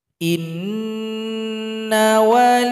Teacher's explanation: Jadi langsungkan nanti ke lafaz Allah, dan lafzul jalalah atau lafaz Allah ini ditebalkan